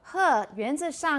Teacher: huh is voiceless right it's just it's just breathing